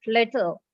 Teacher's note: The consonant L is pronounced as a separate syllable.